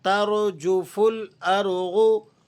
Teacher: یوم ترجف را کو آپ نے موٹا کر کے پڑھنا ہے. ترجف الارض را یہاں پر بھی موٹی کی جائے گی اور غاد یہ تو حروف مستعلیہ میں سے ہے ہمیشہ موٹے پڑھے جانے والا حرف ہے.